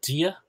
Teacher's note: For me, it sounds like a J, Gia. But I've heard Kerry Irish, and it sounds a little bit, to my ears, drier for that slender D.